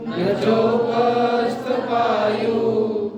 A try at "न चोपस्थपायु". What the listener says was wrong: वायु नहीं पायु पानी का न चोपस्थपायु